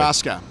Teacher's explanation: You don't lean on any of the syllables. They're all equal